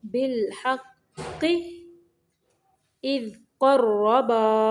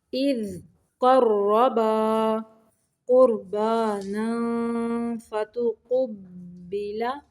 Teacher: قاف کو موٹا پڑھنا ہے، را کو بھی موٹا پڑھنا ہے